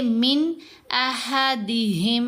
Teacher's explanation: ساکن میم نہیں پڑھی جائے گی، یہ مشدد میم کے اندر مرج ہو جائے گی اور اس کو ادغام شفوی کہتے ہیں۔